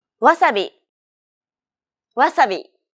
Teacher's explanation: The sounds may be the same, but don't forget that Japanese isn't a stress-timed language like English, So instead of stressing the second syllable like wasabi, make it even throughout.